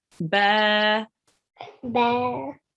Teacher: And following the ba, we have an alif, and the ba carries a fatha, and we think this is a Alif Madiyah. Okay, so we prolong it for 2 seconds.